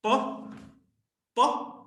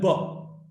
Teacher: in case of pa, the vocal cords are held apart. When the air passes through, there is no vibration